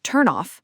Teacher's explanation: The N sound links directly to the O. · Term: linking